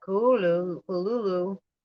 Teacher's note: Oh, it's funny. And said the first syllable pronounced gutturally and very thickly. The U is about like that in full, and the first syllable is not unlike klul in sound.